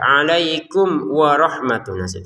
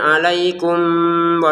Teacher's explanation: mim sukun bertemu wawu. Kini kita baca dengan jelas ya.